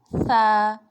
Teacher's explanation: اس کو ہم ادائیگی کے وقت زبان کا سرا اوپر کے دانتوں کے اندرونی کنارے سے ٹچ کرتے ہیں تو ثا ادا ہوتا ہے۔ اس کو سیٹی کے ساتھ ادا نہیں کرنا، یہ نرمی سے ادا ہوگا۔